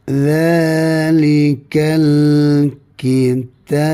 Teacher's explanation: Kalau kita berhenti, zalikal kitab ni huruf ba maka dia melantung ya ketika mana berhenti.